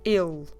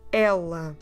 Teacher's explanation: The word for he is more a closed vowel, so you don't open much your mouth, you do a il.